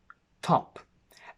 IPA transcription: ɒ